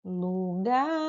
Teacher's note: Então, o gar durou mais. Então, é a última sílaba mais forte.